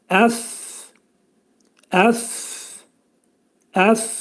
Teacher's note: Fə hərfinin məxrəci yuxarı dişlərlə alt dodağın arasından biz bu hərfin məxrəcini çıxaracaıq və dilimizdəki fu hərfi kimi deyiləcək.